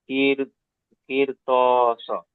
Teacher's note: সাকিনের ডান দিকে যে রেখে, এটি পুর করে পড়ার কথা, বাড়ি করে পড়ার কথা ছিল। হ্যাঁ, বারিক হওয়ার পর হরফে মুস্তালিয়া 7টি অক্ষরের মধ্যে ত এসেছে, সেই জন্য একে পুর করে পড়তে হবে।